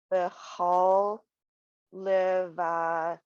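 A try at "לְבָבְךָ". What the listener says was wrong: Levavecha. So it has its own syllable, yeah.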